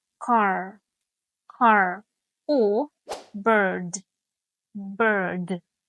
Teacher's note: The R sound. In general American English, the R sound is usually pronounced, especially when it comes after a vowel